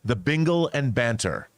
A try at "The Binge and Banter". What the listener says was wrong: You saw an L there, sorry.